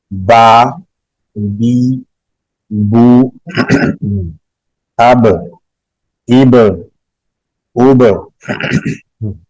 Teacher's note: دونوں ہونٹوں کا تری والا حصہ آپس میں ملنے سے ایک حرف با ادا ہوتا ہے. یہ دیکھیں دونوں ہونٹوں کا تری والا حصہ آپس میں ملا تو ایک حرف ہم با ادا کریں گے اس سے.